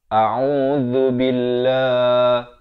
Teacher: Hamzah di pangkal kerongkong, Ain di pertengahan kerongkong, Zal di hujung lidah. A'udzu billah dibacakan nipis 2 harakat.